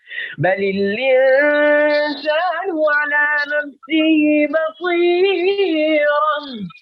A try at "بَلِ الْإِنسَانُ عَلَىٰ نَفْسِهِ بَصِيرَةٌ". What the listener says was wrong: اتنا نہ بنے یہ مد زیادہ ہو گئی ہے پد اصلی پھر پڑھیے بل الانسان